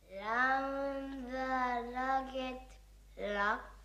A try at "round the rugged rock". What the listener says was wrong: No, no, not l, l, l, it's r, r, r. Round the rugged rock. It's not as though you can't pronounce the R.